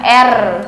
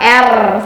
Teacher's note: pada fonem R ini ujung lidah menyentuh gusi. Jadi kita posisikan tetap lidah anak ke atas dengan cara mencontohkan bunyinya R.